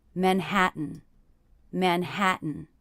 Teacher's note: the last syllable mmm is really just the n sound so the letter A there is representing the schwa sound · the stressed syllable of manhattan is the middle syllable